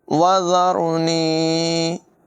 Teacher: ज़ाल के बाद में सीटी हरगिज़ पैदा ना होने दें